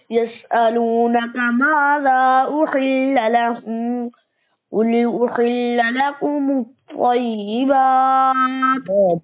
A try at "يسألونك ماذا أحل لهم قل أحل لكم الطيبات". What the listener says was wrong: ماذا أحل لهم مد होगा. يسألونك ماذا أحل لهم قل أحل لكم الطيبات وما علمتم من الجوارح مكلبين تعلمونهن مما علمكم الله.